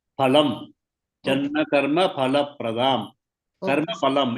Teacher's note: In the case of Sanskrit, there's no fa. It is pronounced as pa.